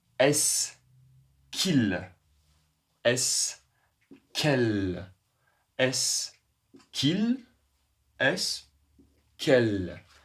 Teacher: le dernier S n'est pas à prononcer. Donc ce sera la même.